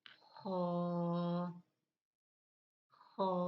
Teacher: یہ حلق کے اوپر والے حصے سے ادا ہوگا، اور تھوڑی سی اس میں خرخری سی پیدا ہوگی۔